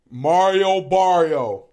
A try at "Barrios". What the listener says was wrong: Barrios. It's an S. Barrios. Mario Barrio.